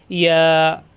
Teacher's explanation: জিব্বার মাঝখানে উঠে চাপ দিয়া একালিপ টান